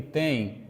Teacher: O tem, na verdade, é vogal, mas semivogal. Então, tem um ditongo decrescente. Só que ele é nasal, gente.